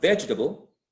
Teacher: Vegetable has the stress on the first syllable